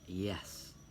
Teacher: the active articulator is the tongue body and the passive articulator is the hard palate. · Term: palatal